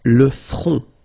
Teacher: Final T not pronounced. Le front. Okay, remember this nasal on, on. Le front.